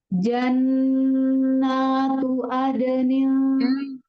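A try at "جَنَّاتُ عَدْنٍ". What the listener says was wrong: Bukan adenin Mi. Bukan hamzah. Ain. Jannatu adenin, adenin.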